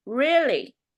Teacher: so like surprise about something, you add the tone up a little bit.